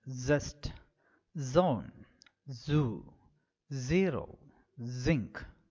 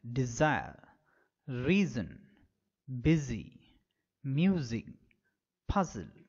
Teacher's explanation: the vocal cords lying close together, the air escapes after vibrating the vocal cords. So, Z can be described as oist alveolar fricative.